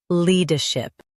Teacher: le der ship le-der-ship le der ship le-der-ship Stress le and keep ship soft. · Stress lee and keep ship soft.